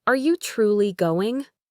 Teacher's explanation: we need to strongly stress are and let your voice rise significantly at the end.